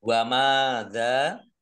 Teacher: mim fathah alif mat tabi'i dal fathah alif juga mat tabi'i dibaca panjang 2 harokat